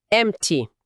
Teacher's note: Muitas vezes, na fala rápida do inglês americano, esse P quase some ou some completamente.